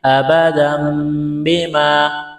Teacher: یہاں تنوین کے بعد با ہے تو اقلاب کریں گے، آواز ناک میں چھپائیں گے